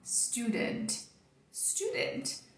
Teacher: Não tem I de apoio pra você colocar aqui no final, não tem intruso, tá? Então fecha, encerra, freia, desse Tzinho aqui no final.